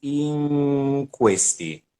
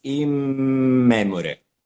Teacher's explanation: when we say in questi, it's like the N, so you don't close the lips. It's in questi, but in this word you close. It's in memore.